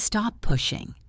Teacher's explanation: It becomes stop pushing. One long p sound.